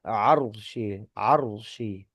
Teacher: fathannya huruf ain kata arsi maka ro sukun di sini ee hukumnya adalah tebal atau tafkhim